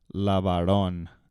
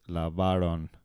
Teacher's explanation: it's not on the last syllable. It's on the second to last.